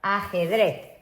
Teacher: So the Z, remembering in Spanish, it's a TH sound.